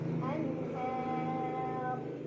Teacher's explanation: Di ujung ro-nya apabila berhenti dibaca secara tafkhim karena bila berhenti ro-nya disukunkan, maka lihat huruf sebelumnya. Karena huruf sebelumnya berbaris di atas, maka ro-nya tebal. Artinya pangkal lidah kita terangkat.